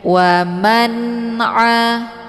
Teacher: Wa man'a ini ain letak posisinya di tenggorokan bagian tengah. Jadi dibacanya a bukan a.